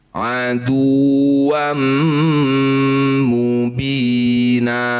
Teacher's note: Bunyi fathah tanwin ganti jadi fathah panjang. Sama ya panjangnya sama dengan mad thobi'i dua harakat saja. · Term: mad iwat